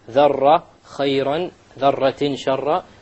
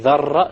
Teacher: You make sure there is no rolling of the R. This is a very common mistake.